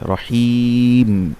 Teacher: মদের হরফের পরে যদি ওয়াকফ করা হয় তখন সেটা মধ্যে আরজি হয় তিন আলিফ হয়ে যায়